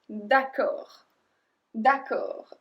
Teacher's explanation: And we don't pronounce the D at the end